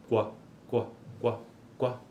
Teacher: apresenta um arredondamento dos lábios ó então qua qua qua qua é esta oclusiva velar no caso o c com arredondamento com uma espécie de semivogal u